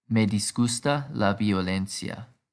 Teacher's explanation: violence disgusts me the emphasis is the same as with historia this is because ia is a diphthong and thus treated like one syllable